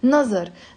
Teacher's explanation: in Lebanese, we will pronounce it as a za, not as a va or anything like that.